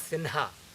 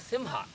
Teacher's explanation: Some people, for example, if you take this word, si with a bindu and ha, some people pronounce it as sinha, some pronounce it as simha, basically taking either na or ma